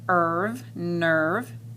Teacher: the r robs the e so it says er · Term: r control vowels